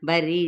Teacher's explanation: را تشدید زیر ہے تو اس کو باریک ادا کیا جائے گا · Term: را باریک